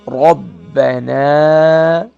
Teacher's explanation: با double letter double sound ہے، را کو موٹا کریں گے